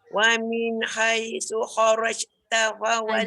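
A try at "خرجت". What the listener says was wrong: Jim tak boleh bunyi kharajta. Jim tak boleh bunyi angin. Dia tak boleh lepas kharaj. Dia tidak ada angin langsung. Kharajta.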